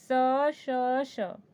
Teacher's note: आपकी जीवा को थोड़ा सा संघर्ष करना पड़ रहा है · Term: संघर्षी व्यंजन